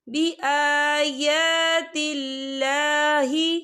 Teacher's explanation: اللہ کا نام باریک پڑھا جائے گا کیونکہ اللہ کے نام سے پہلے زیر ہے